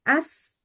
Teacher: Tapi yang keluar itu adalah tinggal udaranya aja sama sifat sofirnya. Jadi bunyi nyaringnya itu datang dari udara yang kejepit di antara gigi sama lidah sebenarnya. Jadi bukan suara yang keluar dari pita suara.